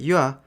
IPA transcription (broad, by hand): ɥ